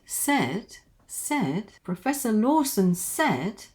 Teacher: It goes up, down and little bit up there at the end.